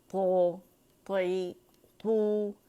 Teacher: اسے تو تے نہیں بنائیں گے، تو اور تا کی درمیانی شکل نہیں بنائیں گے، بلکہ موٹا لیٹر ہے، موٹائی سے ادا ہوگا